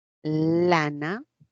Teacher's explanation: porque el aire se escapa por los costados de la boquita por los lados laterales